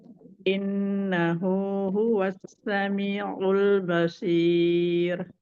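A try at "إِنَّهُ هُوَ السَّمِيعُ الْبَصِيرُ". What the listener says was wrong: Ya, sinnya lebih rokoh, Mi. Innahu huwassa. Jangan diputus.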